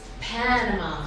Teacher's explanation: in English its Panama on the first syllable